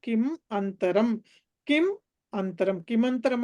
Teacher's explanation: కిమంతరం అంటే కిం అంతరం. జస్ట్ మ అండ్ ఆ కలిసినాయి అంతేను